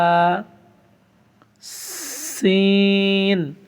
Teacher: একটু বাতাসের মতো বের হবে সিন উচ্চারণের সময়।